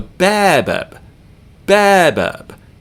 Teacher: Babab is what this word is. The first syllable gets stress, the second one does not.